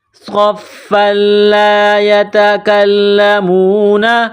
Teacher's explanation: صاد کو موٹا پڑھیں گے، صاد میں سیٹی کی آواز پیدا کریں گے۔ اس کے بعد فا ہے، فا کے اوپر جو یہ 3 دندانے والی چیز ہے، اس کو تشدید کہتے ہیں۔